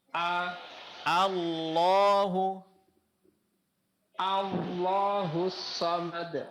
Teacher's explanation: Jadi bukan Allah tapi Allahu yang ditebalkan huruf lamnya